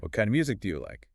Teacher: the stress falls firmly on what kind and music